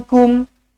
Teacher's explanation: Nun kosong bertemu dengan kaf, ikhfa hakiki, dengungkan dua harakat.